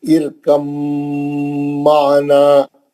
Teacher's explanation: ایک ہی مخرج کے ہونے کی وجہ سے آپس میں ادغام ہو گیا ان کا، اور با گر گیا. اب میم سے ہی پڑھیں گے.